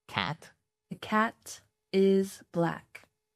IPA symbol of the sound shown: æ